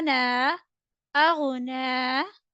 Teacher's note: Ghain will read with full mouth. Noon standing fatha na is stretchable equal to one alif because of standing fatha, while ya is not readable because it don't have fatha, kasra or dhamma over there.